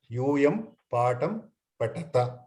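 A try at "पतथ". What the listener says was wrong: Patatha and patatha. Mahaprana, not alpa prana.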